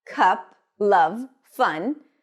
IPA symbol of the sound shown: ʌ